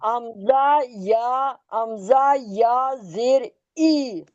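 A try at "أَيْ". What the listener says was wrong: नहीं ना, हमजा या जबर, यार क्या होता है? नहीं होता है, फिर आगे क्या होगा? हमजा जबर आ क्यों होगा अब? आई हो गया, फिर आगे।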